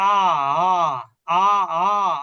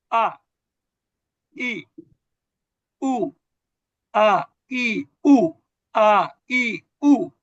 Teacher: কণ্ঠনালীর গোড়া থেকে, অর্থাৎ গলার শুরু থেকে আ, একটু অনেকটা একটু ধাক্কার মতো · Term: হামজা